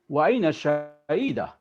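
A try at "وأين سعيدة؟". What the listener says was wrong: Pakai sin Ustaz, bukan shin. wa aina sa'idah.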